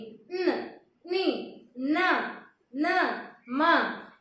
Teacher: ये 5 अक्षर का आवाज नाक से आते हैं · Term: अनुनासिक व्यंजन